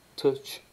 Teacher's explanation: Ch, et cabal, on devient cheval. Et puis, c'est ce qu'on appelle une affriquée, touch, hein, donc occlusive et fricative, ce qui fait affriquée